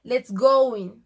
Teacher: For example, with the sentence let's go in, you can tell the w sound between go and in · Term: intrusive U